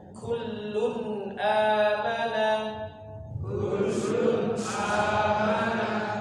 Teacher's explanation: Jadi lunnya dibaca jelas, jangan dipanjangkan, jangan kullun kurang tepat, tapi langsung begitu sudah lun langsung lun kullun amana, kullun amana.